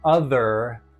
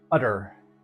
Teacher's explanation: the giveaway that they're not American, is the hard th sound they make. So, instead of saying other, they will say utter.